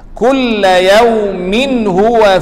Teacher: Yawmin huwa, tanwin bertemu dengan ha. Ini izhar halqi, jelaskan tanwin.